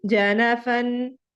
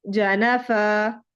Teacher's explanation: اس پر وقف کرنے کا رول کیا ہے ہمارے پاس کہ جس کلمے کے آخری حرف پر دو زبر کی تنوین ہو، اس پر وقف کرنے کی صورت میں ہم تنوین کو، دو زبر کی تنوین کو الف سے بدل کر الف کے برابر لمبا کرتے ہیں۔